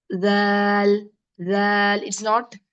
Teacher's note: the zal you have to use your tip of the tongue, and then it should touch the upper central incisors, and then it will be a little bit outside.